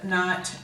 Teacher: because we can't make that guttural sound, that huck sound at the back of our throat, we leave it out when we say those words